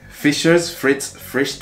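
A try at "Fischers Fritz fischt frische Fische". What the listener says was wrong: You only said like frischt. With R, but it's not R, it's fischt. That was the only mistake.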